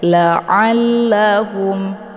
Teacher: Alla, di sini ada lam yang bertasydid, jadi cara bacanya ainnya dileburkan ke dalam huruf lam dengan cara ditekan sedikit